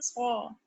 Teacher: سو موٹا اور اونچا ہے، منہ بھر کے پڑھنا ہے آپ کو. صاد ادا کرتے وقت ہونٹوں کو گول مت کیجیے، سواد مت پڑھیے.